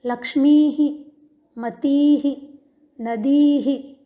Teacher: दीर्घ ई है अतः उच्चारण होगा की ही।